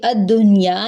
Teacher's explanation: ویسے تو یہ رول ہے کہ نون ساکن کے بعد یا آ جائے تو ہم ادغام کرتے ہیں، لیکن یہ الدنیا ورڈ جو ہے ایکسیپشنل ہے، یہاں پہ ادغام نہیں بلکہ اظہار ہوگا، نون کی آواز کو ظاہر کریں گے